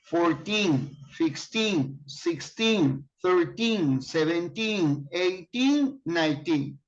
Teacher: When you use number from 13 to 19, the accent is on teen.